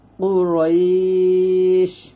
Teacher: রয়তে এক লিফ টান দিয়ে শিনটাকে সাকিন করে ফেলবেন